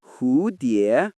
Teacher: The first syllable rises and the next dips low.